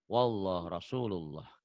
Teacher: Ini lafaz Allahnya dibaca tebal. Karena sebelum lafaz Allahnya baris di atas. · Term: tafkhim tebal